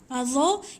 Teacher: Ingat, dha ni bukannya bunyi za. Dia tak bunyi za macam tu. Dha ni pun hujung lidah di antara 2 gigi.